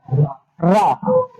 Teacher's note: लुंठित व्यंजन जिसको उच्चारण करते समय जीव कंपन करती है, इसे प्रकंपित भी कहते हैं